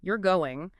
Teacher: With a rising intonation, it sounds like a question. But if you say it with a falling intonation, it sounds like a statement.